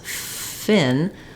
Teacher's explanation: a stop sound that just air stops and then releases, versus the F sound I can hold and continue as long as I need to